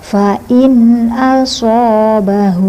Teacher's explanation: Shya dibaca panjang karena ada fathah depannya alif. Fain asobahu hu damirnya panjang dua ketukan.